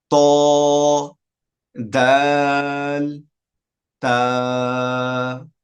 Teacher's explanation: 11 নম্বর মাখরাজ, জিহ্বার আগা সামনে ওপরের 2 দাঁতের গোড়ার সঙ্গে লাগাইয়া উচ্চারণ করতে হয় ত, দাল, তা।